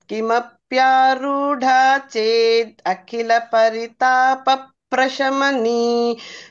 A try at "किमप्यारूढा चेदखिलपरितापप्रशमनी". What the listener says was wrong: చేత్ దగ్గర చేత్ అఖిల అంటున్నారు, మళ్ళీ చేదఖిల.